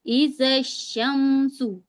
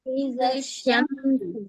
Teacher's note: ہم زال کو سیدھے شین سے ملائیں گے